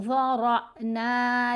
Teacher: तो हमने रा को पुर पढ़ना है, मोटा पढ़ना है, झटका देना है।